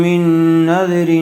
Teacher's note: من نذر رن غننے کے ساتھ اخفا ہوگا، تنوین کے بعد حروف اخفا میں سے فا آیا ہوا ہے